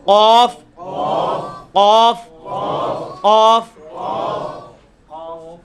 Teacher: ویسے تو یہ قاف جو ہے وہ آپ کی زبان کی جو تالو ہے نا پچھلی سائڈ والا, اس کو زبان کا جو اوپر والا حصے میں جو پچھلا حصہ ہے نا اس کو آپ اوپر تالو کے ساتھ ٹچ کریں گے, اسی حصے میں قاف نکل آئے گا